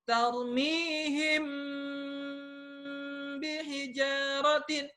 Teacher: Di sana ada mim sukun ketemu dengan huruf ba. Mesti dengung dulu, tidak boleh terburu-buru. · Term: ikhfa syafawi